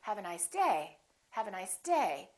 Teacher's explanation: so my voice is still going down even though I'm stressing the word the pitch is still down · I'm still going to emphasize the word day, but I'm not going to make my pitch go up.